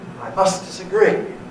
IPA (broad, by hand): I ˈmust disaˈgree